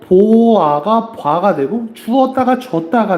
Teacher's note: 지금부터는 모음이 축약될 겁니다. 모음이 축약될 땐 두 모음이 만나서 하나의 모음으로 줄어드는 현상인데 이거는 표기에 나타납니다. · 오, 우랑 아가 만나가지고 와가 되는 경우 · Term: 모음 축약